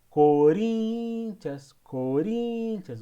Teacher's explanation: O rim é a sílaba mais forte.